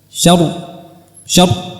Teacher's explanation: Apabila kita naikkan bibir kita min syarr, maka akan tebal. Syarri, syarri, ri, ir.